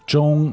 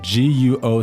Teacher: guo second tone a rising tone the second tone okay so first high and flat and then rising